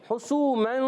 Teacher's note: حسومن، ہا پر پیش ہے، بغیر کھینچے ادا کریں گے، ہا حلق کے درمیان والے حصے سے۔ سین واو پہ سو، واو مدہ ہے، سین سیٹی کے ساتھ ادا ہوتا ہے۔